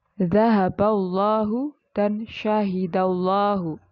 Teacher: lam dibaca tebal ketika ada huruf lam pada lafaz jalalah atau lafaz Allah yang didahului dengan huruf berharokat fathah dan dhammah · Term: tafkhim